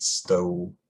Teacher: I know in like traditional RP, the O, the goat vowel, pretty much stayed a similar quality before dark L. So you'd say like something like stole, whereas in my dialect, I think it's allophonically backed.